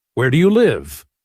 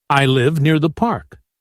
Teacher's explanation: The voice falls at the end to show completion. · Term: Falling intonation